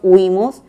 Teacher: esta es una palabra grave con acento en la penúltima sílaba